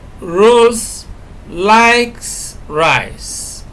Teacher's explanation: So when we say Rose likes rice, we are stressing likes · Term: emphatic stress